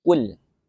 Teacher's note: qaf di sini adalah huruf tebal ya, atau huruf isti'la yang mana lidah bagian belakang ya itu mengangkat ke atas ke arah langit-langit. Ul, apalagi ketika huruf isti'la ini berharokat dhammah itu tebal ya, ketebalannya lebih tinggi dibandingkan qaf ketika berharokat kasroh ya.